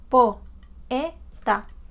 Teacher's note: Acá tenemos dos vocales que estaban juntas, pero fíjense que no están en la misma sílaba.